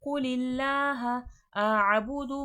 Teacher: اللہ لفظ normal flat اللہ پڑھا جائے گا، موٹا کر کے نہیں پڑھا جائے گا